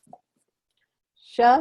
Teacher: So in the second sha sound, the tongue, it's not the tip of the tongue, it's more of a flattened kind of tongue that's at the top of the mouth.